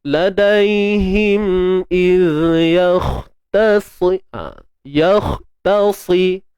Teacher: Macam mana nak jadikan tebal kha ni? Kena angkat pangkal lidah.